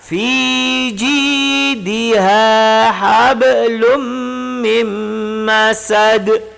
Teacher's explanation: Hablum, lum ini baca dengung karena dia idgham idgham ma'al ghunnah ataupun idgham bi ghunnah.